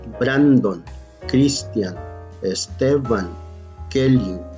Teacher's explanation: La sílaba tónica es la penúltima. Bran, Cris, Te y Que. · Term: palabras graves